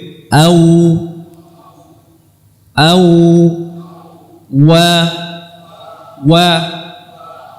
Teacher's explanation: huruf waw dengan memonyongkan dua bibir.